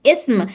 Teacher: اسم اگر اکیلا بولیں گے تو یہاں پر حمزہ کو پڑھا جا رہا ہے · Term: حمزۃ الوصل